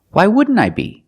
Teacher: You see the NT in wouldn't is between vowels, so you don't really hear the T.